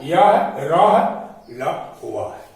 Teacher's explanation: तो इन व्यंजनों का उच्चारण स्वर तथा व्यंजन के मध्य का सा होता है, यानी स्वर और व्यंजन दोनों के बीच का होता है। उच्चारण के समय जिह्वा मुख के किसी भाग को स्पर्श नहीं करती है। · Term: अंतस्थ व्यंजन